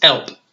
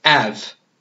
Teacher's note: So the first thing to notice is I didn't say who. Drop the H. Don't ever use it, basically, in the Cockney accent, if you can help it. So it's elp, or I instead of have, it's av.